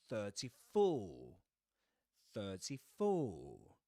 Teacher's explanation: No pronunciation of the letter R at the end because there's no vowel sound right after it.